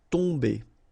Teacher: Okay, so remember, you've got O-M here, but after that you've got a consonant, so it does mean that this combination of O-M will give you the sound on. Okay, you don't pronounce the M at all, so it's really a nasal, so it goes in your nose.